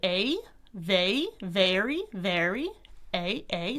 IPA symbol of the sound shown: eɪ